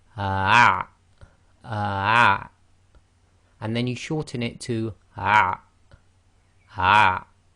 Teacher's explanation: So again, slowing it right down, you can go say ah, ah. So say the ah, and then block your throat. Ah. So again, quickly it will be ah.